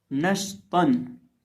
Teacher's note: नून ज़बर शीन नश, ता दो ज़बर तन नश तन। अब यहाँ हम ता को मोटा करके पढ़ेंगे क्योंकि ता भी हरूफ मुस्तालिया में से है